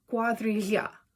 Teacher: it is a palatal lateral approximant